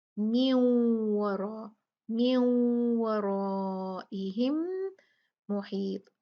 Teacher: واو یرملون میں سے ایک لیٹر ہے حرف ہے تو ہم یہاں پر بھی نون ساکن کو واو سے ملا دیں گے اس کا ادغام کر دیں گے. نون کا ادغام ہو جائے گا واو کے ساتھ